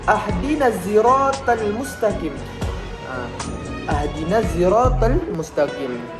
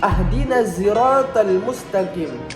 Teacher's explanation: Terdapat ikhdam sod ke dalam za dengan sedikit perbedaan pengucapan. Yang biasa kita dengar ihdinas siratal mustaqim.